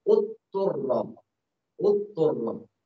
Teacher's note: langsung ke makhraj to, sehingga suara dotnya hilang dan sifat dotnya juga hilang. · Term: idgham